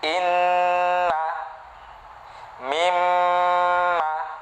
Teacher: Ketika nun dan mim bertasydid maka ada bunyi dengung di situ. Dan dengung itu, gunnah itu keluar dari khoisyum, ya, rongga hidung.